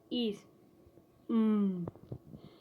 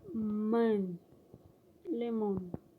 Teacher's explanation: The phoneme M has bilabial articulation point, that is, it occurs at the junction of the two lips.